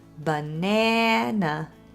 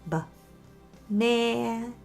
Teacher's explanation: So for example, if I have the word banana, you know that word is spelled with 3 letter A's, but it only sounds like one, banana. The stressed syllable is in the middle, and the other 2 A's are this little schwa sound, banana. So we use schwa to help the important syllables stand out.